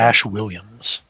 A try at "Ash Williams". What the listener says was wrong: every time you say Ash, it sounds like you're saying ass to me.